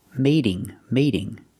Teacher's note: and stop the air mate and the continuous action with ing now the t is between vowels so it makes a fast D